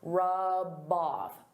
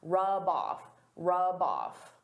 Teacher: They go together. I can take that b sound and connect it to the next word. But I have to combine them together.